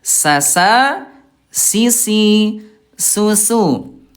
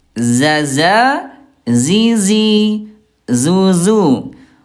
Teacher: sin tipis ada udara, huruf zai tipis nggak ada udara